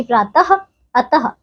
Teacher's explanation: ये विसर्ग है बच्चों और इसका उच्चारण ह वर्ण के समान होता है